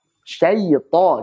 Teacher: Jadi syaita ta tebalkan artinya ta-nya ini punya sifat isti'ala dan itbaq maka tebalkan dan tebal sekali. Karena ta ini kan huruf paling kuat.